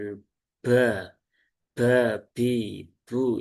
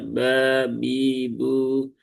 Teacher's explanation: huruf ba jangan sampai dia keluar hamsnya ya. Karena huruf ba itu dia sifatnya jahr. Jadi ee bukan ba bi bu ya, tapi dia ringan juga ba.